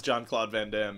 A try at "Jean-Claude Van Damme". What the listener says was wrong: Not John-Claude Van Damme. Sounded like you said John.